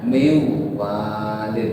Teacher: Seperti min walid dibaca miwalid, langsung tasdid di wawunya miwalid. Nunnya menjadi wawu, hilang, enggak ada. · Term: idgham